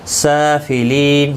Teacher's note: سافلین سین کے اوپر کھڑی زبر ہے، 1 الف کی مقدار کے برابر کھینچ کر پڑھیں گے